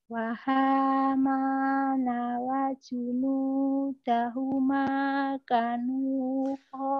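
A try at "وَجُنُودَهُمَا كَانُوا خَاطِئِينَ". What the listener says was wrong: Kanya salah. Kanya panjang.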